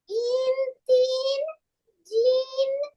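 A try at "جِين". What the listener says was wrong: টান নাই, টান ছাড়া জিন। ইন, তিন, জিন, এভাবে।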